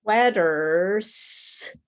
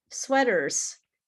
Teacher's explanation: Your mouth naturally goes from the r to the z because it's easier to go from a a vibrate to a vibrate sound, from a vibrate sound to a a vibrate sound.